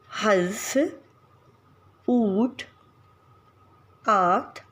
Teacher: अनुनासिक का जो उच्चारण है वो नासिक व्यंजन के साथ होता है। अर्थात उच्चारण के साथ जो वायु है वो मुंह और नाक दोनों के में एक साथ निकलती है।